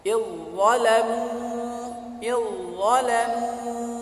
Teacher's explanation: za sukun bertemu dengan dha, makharijul hurufnya sama tetapi sifatnya tidak sama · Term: idgham mutajanisain